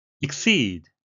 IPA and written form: ɪkˈsiːd (exceed)